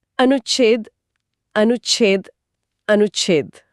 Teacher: ऊ से छ तक जाने में जीभ को एक मिलीसेकंड का सूक्ष्म ठहराव लेना पड़ता है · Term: आधा च